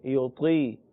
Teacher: وَعَلَى الَّذِينَ يُطِيقُونَهُ، يُطِيقُونَهُ یہاں 2 حروف مستعلیہ ہیں، ایک حرف مستعلیہ کے نیچے زیر ہے، طا کے نیچے زیر، موٹا پڑھیں گے